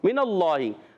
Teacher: اللہ پاک کے لام سے پہلے زبر آ گیا، اللہ پاک کا لام موٹا ہو جائے گا